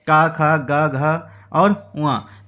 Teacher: का वर्ग का जो उच्चारण स्थान होता है कंठ